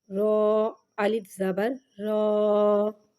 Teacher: رو پہ زبر آ رہا ہے لہٰذا رو کو ادھر موٹا پڑھیں گے